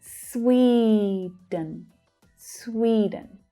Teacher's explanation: So that stressed syllable is the first syllable and it's a long vowel sound.